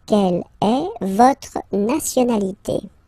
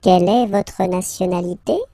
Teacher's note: in French we tend to raise the voice at the end when we've got this little point d'interrogation. If it's a question, don't be afraid to go like yoop and raise a little bit at the end, okay?